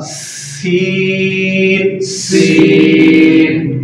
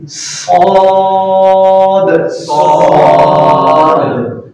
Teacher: سین باریک کرنا اور صاد موٹا کرنا، اور ان کا مخرج ایک ہی ہے